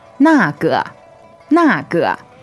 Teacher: Okay, so 那个, fourth tone and neutral. Fourth tone is falling.